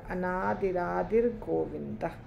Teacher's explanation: अगर विसर्ग नहीं होता तो यहाँ पे अनादिरा र नहीं आता, यानी यहाँ विसर्ग है।